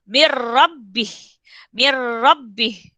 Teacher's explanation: Nampak nun dia kena telan dengan ra.